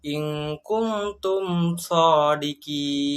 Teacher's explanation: Cara membacanya, bunyi mim disuarakan dengan terang dan jelas tanpa berdengung di bibir dan mulut tertutup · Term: idhar syafawi